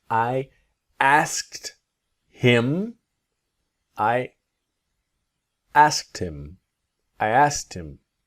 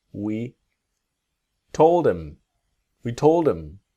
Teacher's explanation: And we're focusing on the him to im and our past tense verbs.